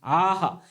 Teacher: हला हिसडा मारून विसर्गाचा उच्चार होत असतो